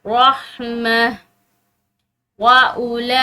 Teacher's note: लाम के ऊपर खड़ी जबर है और बड़ी मद है तो इसको लंबा पढ़ेंगे।